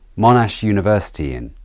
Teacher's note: There's an intrusive y between the university and in.